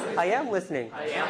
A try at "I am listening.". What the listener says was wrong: Okay, your voice is extra high.